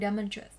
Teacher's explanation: Những từ có đuôi ATE làm trọng âm dịch chuyển 3 âm tính đuôi lên, cô sẽ có từ demonstrate. Với từ demonstrate, trọng âm sẽ rơi vào âm tiết đầu.